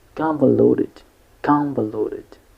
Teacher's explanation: We use the fast T or the flap T between when the letter T is between two vowel sound